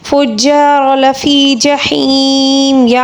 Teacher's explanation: یا مدہ ہے، یا مدہ کو ہم 3 الف کے برابر کھینچ کر پڑھیں گے